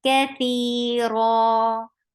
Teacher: You are exchanging the sound of tanween into 2 counts long vowel, so it is 2 counts long. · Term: Mad iwab